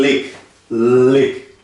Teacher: Você pode ver que o I aqui, ele não é pronunciado como I. Ele é um pouquinho mais para dentro. Como, por exemplo, Y.